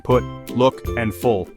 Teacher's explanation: U as in foot is short, high, back and rounded, heard in put, look, and full.